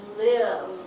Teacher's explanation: The V sound is voiced and it makes your throat vibrate.